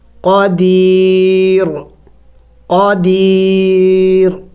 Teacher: آگے را کے اوپر تنوین ہے اور تنوین پر ہمیشہ اخفا کیا جاتا ہے، تو ہم نے یہاں پہ اخفا کرنا ہوگا، یعنی ناک میں آواز چھپانا ہوگا۔ قدیر، وقف میں ہم نے اس را کو سائلنٹ کرنا ہوگا، یعنی ساکن کرنا ہوگا